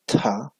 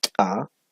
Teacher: El sonido dental también, pero explosivo esta vez, o glotalizado